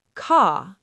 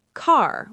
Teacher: >> British car. American car with a strong R · in British English, we often don't pronounce R at the end of words or before consonants. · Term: non-rhotic accent